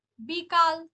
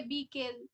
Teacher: আকারের স্থানে হলো একার, পূর্ববর্তী স্বরের প্রভাবে আকার স্থানে একার হলো। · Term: প্রগত স্বরসঙ্গতি